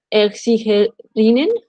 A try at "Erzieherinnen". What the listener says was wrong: Ja, Erzieherinnen.